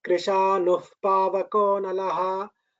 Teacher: we do not pronounce the visarga fully. We pronounce it as Krishanuh Pavakonalaha, like that. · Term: half visarga